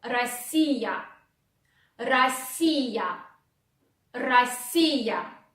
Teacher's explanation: Then O, which goes after R, you want to pronounce like A.